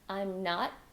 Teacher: hold that T at the end of not